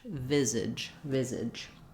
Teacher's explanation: And then we have our AGE, just sounds like idge, same as we would have in something like ridge or smidge. So long on the vi and short on the zidge.